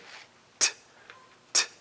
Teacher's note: Sometimes you have total blocking of the air like t, t. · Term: stop